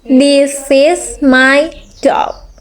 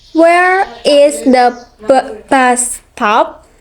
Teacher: Falling intonation. Used for definite statement and word question. Example, this is my dog.